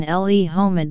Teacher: and may be separated from the noun with a bit of a glottal stop